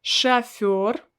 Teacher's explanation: i don't pronounce o as it's written i pronounce it as a because it's not stressed